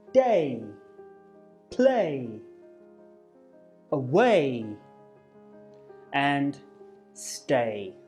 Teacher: both sounds are what we call unrounded so we keep our lips stretched out like we're smiling but our mouth will close a little as we move move to the e sound eh-eh-eh-eh so you'll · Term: a sound